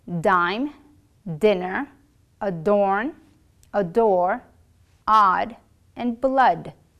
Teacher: the tip of your tongue needs to be firmly pressed against the gum bridge which holds your upper teeth your vocal folds will vibrate during the words like dine dinner adorn a door odd and